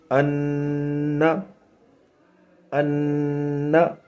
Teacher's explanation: 1 الف کے برابر آپ کو وہ ناک میں آواز روکنی ہے۔ تو غنے کی مقدار 1 الف کے برابر ہے۔